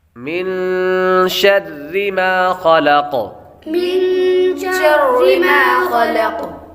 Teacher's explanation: نون ساکن کے بعد شین حروف اخفاء میں سے آ رہے تو غنہ کریں گے، اخفاء کا قاعدہ لگے گا۔